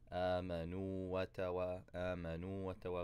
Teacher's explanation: We don't combine anything. There's no shadda on the second waw.